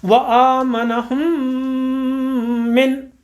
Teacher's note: ہا کے اوپر جو پیش ہے یہ آگے والی میم کے ساتھ جا کے مل رہا ہے اور وہی غنہ ہوگا